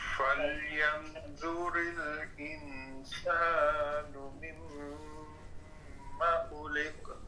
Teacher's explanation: اور خلق یہاں قاف میں قلقلہ ہوگا